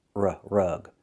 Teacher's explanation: Use a short uh sound like cup and up.